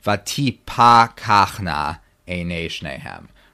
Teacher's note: Right, so you have a kamatz, and this is a real kamatz. This is a long ah sound under the pe in vati pakachna